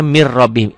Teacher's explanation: Tulisannya min rabbihim, dibacanya mir rabbihim. Ini idgham bilagunah, idgham tanpa dengung, tanpa ditahan